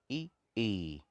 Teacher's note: तो ई के लिए आप तालु में लगाते हैं, थोड़ा सा जीभ का एक पार्ट इसमें तालु में लगता है। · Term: तालव्य